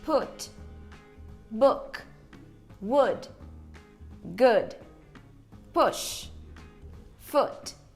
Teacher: Aqui você vai mirar num O de ovo, mas não é um O de ovo. É algo entre o O de ovo e o U de uva, uma vogal intermediária que a gente não tem no português.